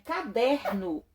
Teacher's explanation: a sílaba tônica está na segunda na segunda sílaba de trás para frente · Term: paroxítona